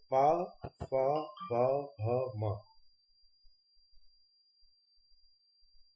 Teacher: इन वर्णों को हम बिना ओंठ के सहयोग के नहीं बोल सकते। जब भी हम बोलेंगे हमारे ओंठ चिपकेंगे ही एक दूसरे से, इसलिए इनको ओष्ठव्य व्यंजन कहा जाता है।